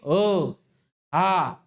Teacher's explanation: ह चा उच्चार बाहेर येतो म्हणजे प्राण वायू बाहेर सोडल्यासारखा वाटतो